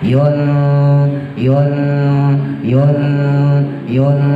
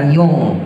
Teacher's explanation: Ausat artinya tengah-tengah, jadi antara en sama eng. Yun yun yun yun, jadi bukan yung ya, enggak semua ifa eng ya, ingat ya.